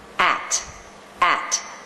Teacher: On its own, it has the a as in bat vowel and the true t.